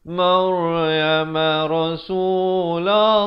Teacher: Lafz jalalah dibaca tebal dua harakat.